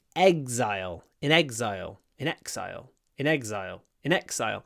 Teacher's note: the ex is pronounced with a z so it becomes like exile egg something like that.